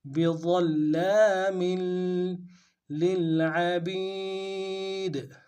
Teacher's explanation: میم کی تنوین کو آگے لام کے ساتھ ملانا ہے، غنہ کرتے ہوئے. بِظَلَّامٍ لِلْعَبِيدِ، لام کو لام کے ساتھ ملانا ہے، غنہ نہیں ہوگا، عین کو گہرائی سے ادا کریں گے، با کو یا کے ساتھ ملانا ہے، یا مدہ ایک الف دار میں کھینچیں گے، دال کو نرم سے ادا کریں گے.